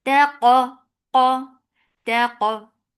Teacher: Taqa, ta is light for fatha upon jaws attached. Qaf, qaf will be heavy with qalqala